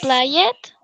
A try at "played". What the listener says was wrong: No. ¿Play it? Yo no veo aquí la E. Played. No play it. Ahí no dice play it. Played. Porque el sonido es de D.